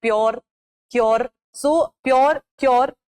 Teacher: जब कॉन्सोनेंट थोड़ा सा चेंज हो जाता है और हमारी हार्ड पैलेट को टच करता है in the front of the tongue, not in the back, back में सॉफ्ट है, फ्रंट में हार्ड पैलेट है. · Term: palatalization